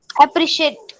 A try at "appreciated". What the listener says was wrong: There is a D at the back, isn't it? So how would you pronounce it? Appreciated. Appreciated.